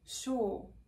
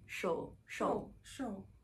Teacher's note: the tongue is really low and pulled back and the lips are rounded it tends to be quite quick though sure sure sure right